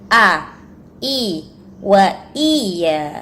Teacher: sekarang hamzah keluar dari tenggorokan bagian bawah, jadi tidak dibaca ngambang